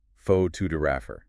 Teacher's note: It changes completely. >> The stress shifts entirely to the second syllable. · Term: word stress